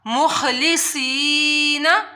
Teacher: خا کو حلق کے اوپر والے حصے سے ادا کرنا ہے · حروف مستعلیہ میں سے بھی ہے اور سیٹی والا حروف بھی ہے تو اس کی آپ لوگوں نے سیٹی بھی نکالنی ہے ، اور یا ساکن ہے اس سے پہلے زیر آ رہی